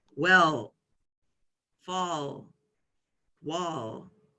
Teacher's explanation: The sound of a dark L is well, fall, wall. Similar type of lip position to the light L, but with a dark L, we have our tongue actually through our teeth